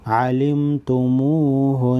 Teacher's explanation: नून मुशद्दद है, गुन्ना करेंगे